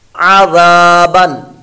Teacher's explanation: اگلا کلمہ عین زبر ع, غال الف زبر غا, عوا, با دو زبر بن, عذابن. عین زبر ع, حلق کے درمیان والے حصے سے اس کی آواز نکلے گی اور یہاں پر حمزہ کی آواز نہیں نکالنی